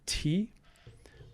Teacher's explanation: aspiration is the name given to that puff of air that comes after the the stop in t